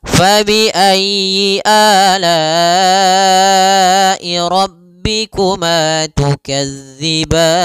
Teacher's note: Kemudian tukadziban, mad arid lis sukun. Maka pada lafal ban kita boleh panjang 2 harakat, boleh 4 harakat, dan boleh pula 6 harakat